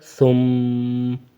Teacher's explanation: میم پہ غنہ ہوگا وقفاً میں بھی، ثم، صرف زبر نہیں پڑھیں گے۔